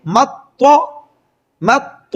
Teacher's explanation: میم اور طا ان دونوں کو آپس میں سختی سے ملا کر پڑھیں گے